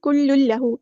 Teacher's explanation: کل لہو ادغام کامل ہو رہا ہے، پورا کمپلیٹ ادغام ہو رہا ہے